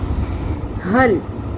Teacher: ہا زبر لام حل، ہا کو اقصی حلق سے، حلق کے سب سے نیچے سینے والے سائڈ والے حصے سے نکالنا ہے اس کو